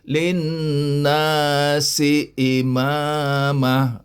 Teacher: Jadi lin tak boleh linnasi, tak. Kena dengung sikit. 2 harakat.